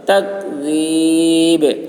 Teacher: بل الذین کفروا، را پر ہوگی، کفروا فی تکذیب. ذال کی آواز باریک، با میں قلقلہ